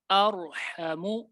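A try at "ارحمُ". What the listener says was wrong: कोशिश करें कलकला ना हो, और ये गलत है। जी, जबान अपने मखरज पे लगी रहे रा में, और आगे से हा भी अदा हो जाए।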